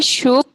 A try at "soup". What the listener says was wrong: अरे सूप ठीक था, उसे आपने शूप कर दिया.